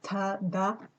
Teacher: In my first language, they are dental, ta, da. Yeah.